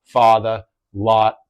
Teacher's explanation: it might be that open or slightly rounded father lot depending on the speaker